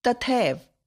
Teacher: तथा शब्द की अंतिम ध्वनि आ तथा एव शब्द की पहली ध्वनि ए परस्पर मिलकर ए हो जाती है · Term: संधि